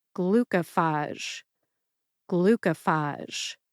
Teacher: I personally stress the first and third syllables most. That would be glu and phage.